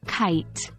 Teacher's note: K, like the K in kite, pronounced at the back of the throat.